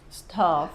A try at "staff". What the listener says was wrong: When you said it, I heard I understood stuff.